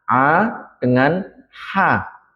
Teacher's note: Kemudian ada tengah tenggorokan. Ini adalah huruf ain dan juga huruf ha.